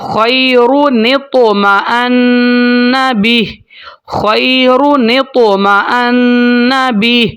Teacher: خیرت نہیں کہنا، خیرون طمأن، اس طرح سے ہوگا۔ نون کو آگے تو کے ساتھ ملائیں گے، یہاں پر نون کے نیچے زیر ہے تو نون زیر تو نتو